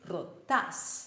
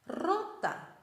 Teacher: the stress is on the very last syllable · the stress is not on the end syllable it's on the second last syllable